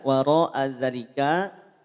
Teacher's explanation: mad wajib muttasil hukumnya caranya panjangkan panjangkan lima harakat